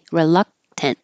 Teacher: when you finish with the t hold it there you don't have to release the T sound